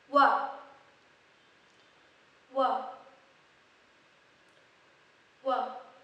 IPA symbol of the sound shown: w